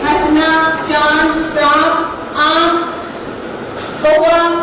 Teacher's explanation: इसका उच्चारण करते समय हवा मुख और नाक दोनों से निकलती है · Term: अनुनासिक स्वर